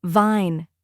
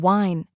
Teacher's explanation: For V, your upper teeth touch your lower lip gently like vine. For W, your lips round forward like wine.